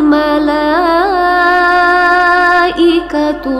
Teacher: Mala itu mad wajib muttasil, jadi bacanya 5 harokat.